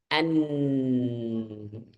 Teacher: secara makhraj dia ada di ujung lidah secara suara dia keluar dari khaisyum